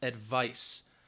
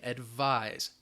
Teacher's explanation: So be careful, especially when you are writing these, as well as saying this, because advice with a C, all right, that C is going to sound like an S, advice. Advise, that S is going to sound like a Z